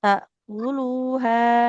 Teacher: lamnya dhammah ada wawunya di depan, maka harus panjang ya